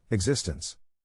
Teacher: To pronounce existence, have in mind that the size of the syllable indicates where the accent or stress is. In this case, the accent is in the second syllable, corresponding to zis.